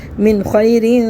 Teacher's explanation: دیکھیں نون ساکن کے بعد خوا ہے حروف القمہ سے، یہاں پہ ہم اظہار کر کے پڑھیں گے، صرف غنہ نہیں کریں گے، نہ اخفا کریں گے